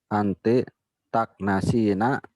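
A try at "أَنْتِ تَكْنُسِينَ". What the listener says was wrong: Taknusu, kenapa diubah jadi takna? Itu jangan dirubah harokat ain fiilnya. Taknusu. Nunnya itu dhammah, kana saya knusu. Anta taknusu, antum taknusuna, anti taknu, bukan takna tapi taknu. Ya, jadi harokat ain fiil itu nggak boleh berubah. Kalau ain fiilnya dhammah maka tetap dhammah. Kalau ain fiilnya kasrah maka tetap kasrah. Kalau ain fiilnya fathah tetap fathah.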